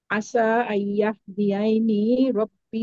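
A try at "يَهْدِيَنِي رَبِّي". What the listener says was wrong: না, ইয়াহদিয়াইনি না, ইয়াহদিয়ানি।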